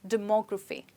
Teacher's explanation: in this word, we stress on MO